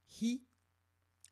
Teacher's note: mon i va être clair et mon h va être audible aussi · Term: H aspiré